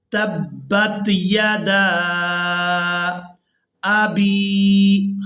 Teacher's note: یدا، تبت یدا ابی، حمزہ کو بغیر کھینچی ادا کریں گے، با کو یاء مدہ کی وجہ سے کھینچ کر ادا کریں گے